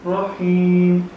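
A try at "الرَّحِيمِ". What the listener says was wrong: ہاں پہ رکنا نہیں ہے، رحیم،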